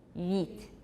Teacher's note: start from the secondary cardinal vowel u, and glide to the next vowel, which is E